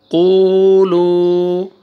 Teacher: قاف ضمہ واو سکون، قو، لام ضمہ واو سکون، لو، قولو۔ دیکھیں قاف کو بھی کھینچنا ہے، لام کو بھی، کیوں؟ واو سکون سے پہلے ضمہ